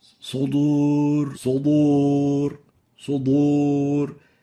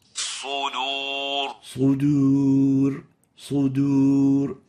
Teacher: make sure the dal remains attenuated enough so it wouldn't be mixed with the dad. · velarizing the dal to a level that it would sound as if it is a dad